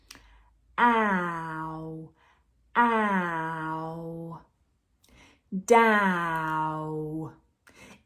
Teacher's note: We need to start with the tongue in a front position for the ah, and then we need to move to a small round position, pulling the tongue back.